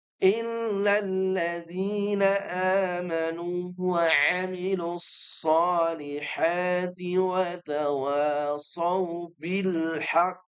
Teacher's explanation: kalau berhenti di haqnya berarti qofnya ditahan dulu, enggak langsung dipantulkan.